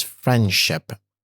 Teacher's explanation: with the D sound being assimilated but not deleted into the following s sound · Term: assimilation